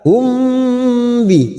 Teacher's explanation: mim sukun yang bertemu ba dan bertemu mim kita dengungkan selama 3 harokat namanya ikhfa safawi kita tahan selama 3 harokat hum bi siap masuk ke huruf